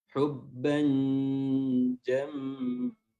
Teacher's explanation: mim tasdid ditahan lagi